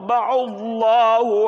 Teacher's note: Lafal Allah sebelumnya dhammah tabkhim tebal.